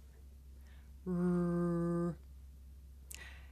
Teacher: I make the r sound by making my lips come out and pulling my tongue back